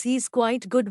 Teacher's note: with a rising tone on good commonly called comma intonation you get the impression that the speaker has left something unsaid